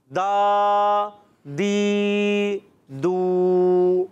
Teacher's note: دال ادا کرتے ہیں زبان کا سرا اور سامنے کے دانتوں کی جڑوں سے. جو سامنے کے دانت ہوتے ہیں بڑے بڑے ان کو ثنائے علیہ کہتے ہیں، ان کی اندرونی جڑوں سے تا دال طا ادا ہوتے ہیں.